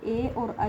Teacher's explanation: यानी कि इनको दोनों को मिला के बोला जाएगा। ए और आई किससे बोले जाएंगे? कंठ और तालु से। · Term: कंठ तालु